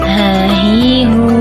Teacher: Huruf ini keluar dari tenggorokan yang terjauh. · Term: huruf h